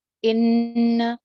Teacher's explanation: نون شد پہ ہم نے غنہ کرنا ہے، زبر کو ہم نے لمبا نہیں کرنا